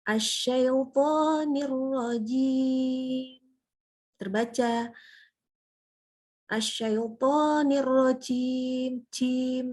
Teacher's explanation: Ar-rajim itu berlebihan hamsnya. Jadi udaranya tuh kedengeran loh kok kayak JH gitu bacanya. Enggak. Atau kayak C malah.